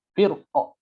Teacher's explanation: Kalau dia berhenti di wakaf di kata firqin ini, maka rohnya dibaca tebal.